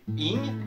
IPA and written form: ɪŋ (-ING)